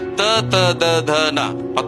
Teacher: ನಾಲಿಗೆಯ ತುದಿ ಮತ್ತು ಹಲ್ಲುಗಳ ಸಹಾಯದಿಂದ ಹೇಳುವಂತಹ